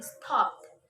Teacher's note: After voiceless sounds other than t, it's pronounced t as in stopped.